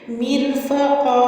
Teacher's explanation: تو یہاں پہ ہم جب وقف کریں گے تو ایک زبر کو پڑھیں گے، ایک کو ہم ڈراپ کریں گے